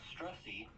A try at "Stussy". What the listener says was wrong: Stussy. It's Stussy. No R.